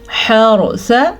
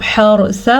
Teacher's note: अगर आपने वक्फ नहीं करना तो इसको आप हर्सा पढ़ेंगे, रा पुर करके पढ़नी है, और अगर हम वक्फ करेंगे तो सा को साकिन कर देंगे, फिर भी रा पुर पढ़ेंगे।